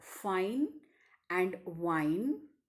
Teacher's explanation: In this labiodental sounds, the active articulator is the lower lip and the passive articulators are the upper front teeth. For example, the initial sounds in the English words fine and wine, that is F and V, are labiodental sounds.